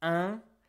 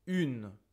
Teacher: But if you look at my mouth, you will see that for un, I can really stretch it like this, un. But for une, I really make it super small, une.